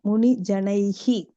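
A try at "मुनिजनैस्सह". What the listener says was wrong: No, Janais is, and the Janaihi, you can't say that. Visarga will take a S sound. So Muni Janais Sahasatyaloke.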